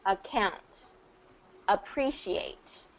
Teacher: Because the stress is not on the A at the beginning, it's going to get a reduced pronunciation, which is typically account, appreciate.